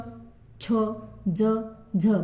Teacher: ही व्यंजन आपण म्हणताना आपल्या टाळूला आपली जीभ चिटकली जाते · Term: तालव्य वर्ण